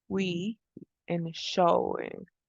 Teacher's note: We also have wa, which is voiced velar glide sound.